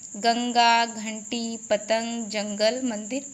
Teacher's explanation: जो अनुस्वार वर्ण हैं इनका उच्चारण नाक से होता है